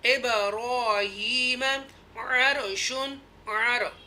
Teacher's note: ये रॉ को पूर पढ़ेंगे क्योंकि ज़बर है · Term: तफ़ख़ीम